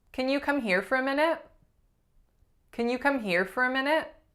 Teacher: The beautiful nasalized a went away and was replaced by a schwa.